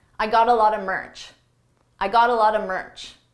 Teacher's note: Here I used a reduction. A lot of is pronounced a lotta, a lotta.